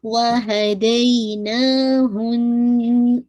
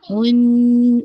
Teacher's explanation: आपको बिल्कुल nasal cavity में जाके गुनगुनी सी जो वाइब्रेशन साउंड होती है वो आनी चाहिए। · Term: अकमल गुन्ना